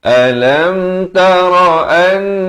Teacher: Alam idhar syafawi. Itu jangan panjang, satu harakat.